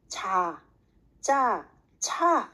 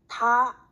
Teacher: 자, 짜, 차 하면은 다, 따, 타하고 보고 혀가 약간 뒤로 간다는 걸 알 수 있어요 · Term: 경국의 음